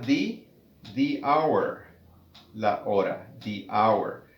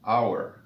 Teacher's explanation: la palabra inicia con el sonido de la vocal O, hour, y la H no suena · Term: H muda